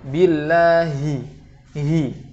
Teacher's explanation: harus diucapkan dengan sempurna dari makhraj yang tenggorokan terdalam. Billahi, tidak billahi minas, tidak seperti menghilangkan huruf ha kemudian hanya tersisa kasrohnya saja.